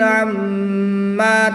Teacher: میم شدت میں ہمیشہ غنہ ہوتا ہے، یہاں پر غنہ کر کے پڑھیں گے۔